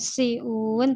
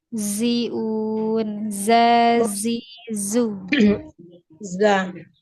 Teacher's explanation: Huruf za hati-hati jangan sampai ada aliran nafasnya. Kalau misalkan ada aliran nafasnya, dia nanti sama dengan huruf sin. · huruf za itu hanya aliran suaranya saja yang mengalir. Dia ada desisnya.